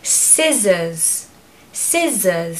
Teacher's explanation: you're going to pronounce the first part louder so stress the first syllable